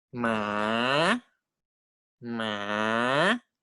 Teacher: The pitch must go down and then go up. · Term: rising tone